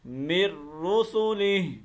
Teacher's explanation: یہاں پر ادغام بلا غنہ ہو رہا ہے